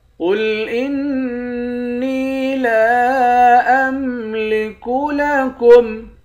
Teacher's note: قاف کو موٹا پڑھیں گے، قاف موٹا حرف میں سے ہے · لام کے بعد الف ہے، اس الف پر مد ہے، اس مد کو 3 الف کی مقدار کھینچ کر پڑھیں گے · نون مشدد پر غنہ کریں گے